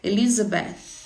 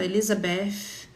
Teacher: Tem que pôr a língua para fora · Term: som do TH